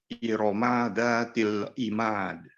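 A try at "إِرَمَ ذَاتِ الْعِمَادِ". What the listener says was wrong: Lagi ada lahan jali di situ. Mim tidak seharusnya dipanjangkan. Irama dzatil imad. Irama dzatil imad.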